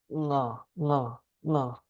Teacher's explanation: It's like something on the back of the throat is closing.